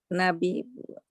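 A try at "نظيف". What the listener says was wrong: Nadhi, dho, pakai dho ya. Nadhifun. Nadhifun.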